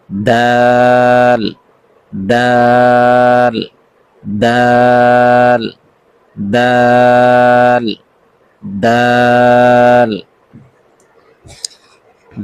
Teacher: জিহ্বার আগা সামনের উপরের দুই দাঁতের গোড়ার সঙ্গে লাগাইয়া দাল উচ্চারিত হয়। দুই দাঁতের গোড়ার সঙ্গে।